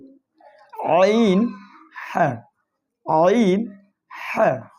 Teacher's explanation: 2 নম্বর মাখরাজ হলকের মধ্যখান হইতে